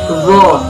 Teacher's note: Makhrajul huruf dzu terletak pada punggung ujung lidah dan ujung dua gigi seri yang atas.